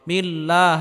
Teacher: আল্লাহ শব্দের পূর্বে যদি জের হয় তাহলে আল্লাহ শব্দকে চিকুন করে পড়তে হবে